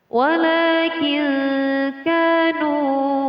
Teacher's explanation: terdapat nun mati bertemu dengan huruf kaf, dinamakan hukum bacaan ikhfa. Cara membacanya dengan samar.